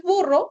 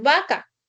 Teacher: a nivel de pronunciación no hay diferencia entre la B y la V. Tú dices el mismo sonido cuando dices burro o cuando dices vaca. Es el mismo sonido, pero a nivel gráfico sí hay una diferencia, es decir, se escriben con letras diferentes.